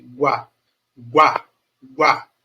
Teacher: é um ditongo crescente porque eu sai de um som fraco para um som forte